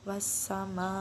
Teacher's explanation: Mad wajib mutasil adalah mad bertemu hamzah pada satu kata, panjangnya 2 alif atau 4 harakat